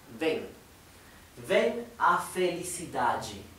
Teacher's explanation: aunque se escribe con M, se pronuncia como una N